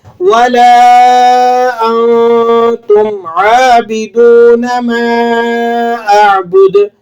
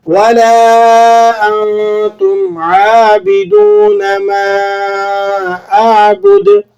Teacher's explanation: یہاں پر عابدون عین کے بعد الف ہے, ایک الف تک آپ اسے لمبا کر لیں گے. اور عابی با کے نیچے زیر ہے تو آپ اسے کھینچیں گے نہیں.